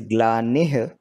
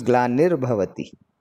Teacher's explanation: when the nih combines with bhavati and you make it a single word, then that visarga goes away and that visarga sound becomes a ra sound before bha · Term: sandhi